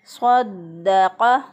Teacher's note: क़ाफ़ जो है इसको भी खूब मोटा करके अदा किया। कव्वे के पास यानी मुंह के अंदर जहाँ पे ज़ुबान जुड़ी हुई है उसके पास गले में एक गोश्त का लोथड़ा जो है वो लटक रहा होता है, उसके पास से ज़ुबान को उठाकर ऊपर के तालु से लगाएं तो क़ाफ़ अदा होता है।